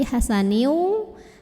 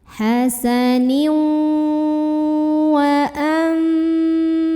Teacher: Bukan hasanin tapi hasaniu, sambil tahan sampai ada getaran ke hidung, masuk disertai dengung. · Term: idgham bi gunnah